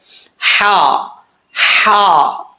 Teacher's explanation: اس ہا کا تعلق حلق کی طرف ہے، سینے کی طرف نہیں ہے۔ ہا زبر ہا، ہا پریکٹس کرنی ہے آپ نے، یہ حلق سے نکلتا ہے۔